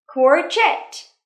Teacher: Trọng âm rơi vào âm tiết thứ hai nhé.